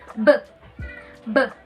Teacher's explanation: B is a voiced bilabial plosive wherein the sound produced when you close the lips and then released a burst.